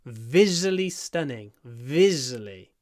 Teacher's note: a long V at the beginning to Mark the stress